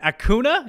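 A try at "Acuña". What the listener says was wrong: Enye, Acuna. the Enye, yes. Enye.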